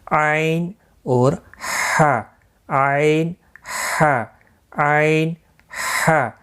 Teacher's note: عین اور ہا وسط حلق سے نکل ادا ہوتے ہیں · تھوڑا سختی کے ساتھ ادا ہوتے ہیں گلے کے درمیان سے